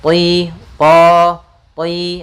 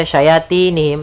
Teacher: pangkal lidahnya terangkat sehingga terdengar suara tebal huruf th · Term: huruf tho